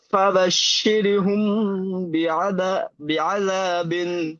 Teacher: মিম সাকিনের পরে বা এসছে, তাই একে একালি পরিমাণ গুণনা করে পড়তে হয়, একে এক পায়ে সাফাবি বলে।